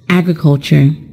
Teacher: or practice of farming that's the meaning of the word agriculture the word agriculture is a noun and it is stressed on the first syllable